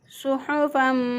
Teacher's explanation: स्वाद को मोटा पढ़ेंगे